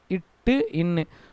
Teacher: நாவின் நுனிப்பகுதி அன்னத்தின் நுனிப்பகுதியை தொடுவதால் பிரிக்கிறது